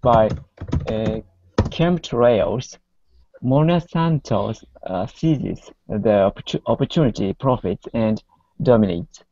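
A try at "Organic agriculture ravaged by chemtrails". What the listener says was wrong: Mm-hmm. Very good.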